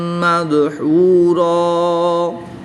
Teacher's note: دو زبر کی تنوین کو وقف کی حالت میں الف مدہ سے تبدیل کر کے پڑھتے ہیں